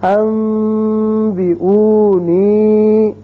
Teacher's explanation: نون ساکن کی مثال ایک کلمے میں، جیسے یہ نون ساکن ہے بعد میں با آ رہا ہے، تو اس کو جب ہم پڑھیں گے تو اس اخلاق یعنی ابدال کی وجہ سے یہاں غننے کسی آواز پیدا ہوگی اور وہی ایک الف کے برابر یعنی دو حرکات کے برابر آواز ناک کے بانسے میں ٹھہرے گی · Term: اقلاب